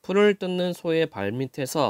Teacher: 뜻이 없는 모음으로 시작하는 조사가 왔어요 그때는 티을 그냥 뒤로 넘겨서 발음합니다